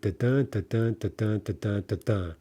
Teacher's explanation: Da-dun is an iambic foot, right? Which means unstressed syllable followed by a stressed syllable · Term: iambic feet